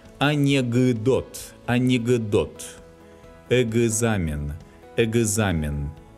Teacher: If it's difficult for you to pronounce these clusters, you may insert a very short «ы» between the consonants.